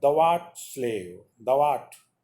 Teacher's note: Here, thou art, although they contain 2 syllables, but we'll speak them as 1 syllable.